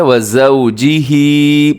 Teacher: زا ہے، زا میں سیٹی ہوتی ہے